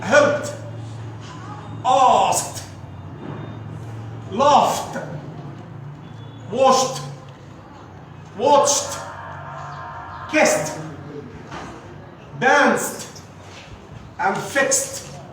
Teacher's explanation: These are voiceless sound, so there is no vibration and they are pronounced like te